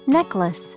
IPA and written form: ˈnɛkləs (Necklace)